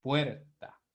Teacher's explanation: Con el caso de puerta, si usted se da cuenta, la mayor fuerza de voz cae ¿dónde? En la vocal E, en la vocal abierta